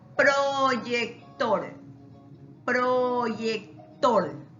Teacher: La sílaba tónica está al último